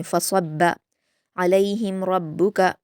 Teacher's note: मीम साकिन के बाद रा है तो इज़हार शफ़वी है, रा को पुर पढ़ेंगे और मीम साकिन की आवाज़ को जल्द पढ़ेंगे